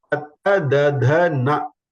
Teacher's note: Teeth, dantya. When you say ta, da, da, na, you can see my tongue touches my teeth.